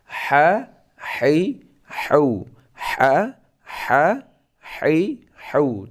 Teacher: itu ha itu keluar di tengah tenggorokan